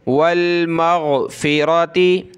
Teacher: गैन को गले से निकालें और नून पर गुन्ना होगा